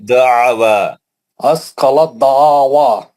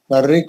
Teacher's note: حرف تا ساکین کا دال مشدد میں ادغام متجانسین ہو گیا